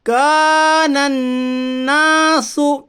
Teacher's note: نون مشدد کے پڑھنے میں ایک الف کے برابر غنہ ہوگا۔ الف سے پہلے زبر ہے اس لیے الف مدہ ہوگا، الف مدہ کو ایک الف کے برابر کھینچ کر پڑھیے۔